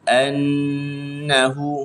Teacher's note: Dighunnahkan mim dan nun yang ada tanda tasydid. Maksudnya kena baca dengan dengun dua harakat. Sempurnakan dengun dua harakat.